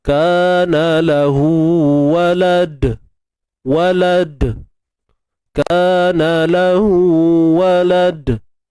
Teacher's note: Bila kita matikan dal ni, maka hadirlah sifat qalqalah, sifat lantunan. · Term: qalqalah kubra